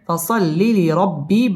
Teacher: প্রথমবার ডান দিকের হরকতের সঙ্গে যেমন সদলাম জবর সল, দ্বিতীয়বার নিজ হরকতের সঙ্গে যেমন লামজের লি, সল্লি, ফসল্লি, লিরব্বি, লির র পুর হবে, কারণ রয়ের উপর জবর অথবা পেশ হইলে ওই রকে পুর অর্থাৎ মোটা করে পড়তে হয়